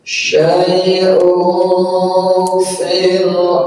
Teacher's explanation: Tanwin domah menghadapi huruf fa, ya, ditahan samar-samar, ikhfa namanya.